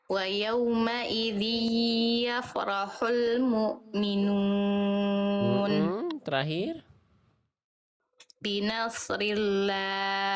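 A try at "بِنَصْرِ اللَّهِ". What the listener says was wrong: Tebalkan lagi sedikit usnya.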